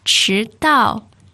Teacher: The important word, 迟 到, second and fourth tone.